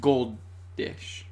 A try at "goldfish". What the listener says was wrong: Goldfish, yeah. yeah, I'm like, you're saying goldfish, but like left out the F. It's like